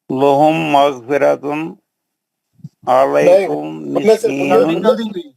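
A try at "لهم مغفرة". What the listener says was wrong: غننے سے پڑھنا ہے، ویسا نہیں پڑھنا. لہم مغفرۃ نہیں پڑھنا ہے، لہم مغفرۃ غنہ کرنا ہے نا.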